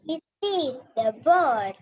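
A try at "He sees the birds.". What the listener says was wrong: Birds. That sound should come out. Okay, birds.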